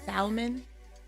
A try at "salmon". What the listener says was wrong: The L is silent.